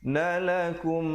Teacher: Nalakum idgham mislain, mim mati bertemu mim, juga dengungkan 2 harakat di situ